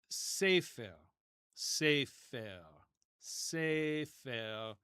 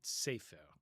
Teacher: notice how the R is pronounced in modern Hebrew. It's similar to French. It's back.